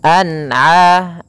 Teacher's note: Apabila ada lafal an'ama, yaitu adanya huruf sukun bertemu dengan huruf ain, maka dinamakan dengan dinamakan dengan bacaan izhar halqi, dibaca dengan jelas suara nunnya.